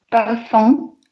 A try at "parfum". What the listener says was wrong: А вот я слышу парфум, а мне нужен парфум, парфум. Более легкий. Слышу О. Смотрите, скажите И вот от сделаем А. Да, вот уже лучше, прямо губы сохраняя, да, не уходя вот куда-то в горло, а именно да, парфум.